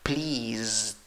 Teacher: La escritura tiene una S, la pronunciación tiene una Z. La escritura acaba con ED, la pronunciación solo acaba con D, esa E no va.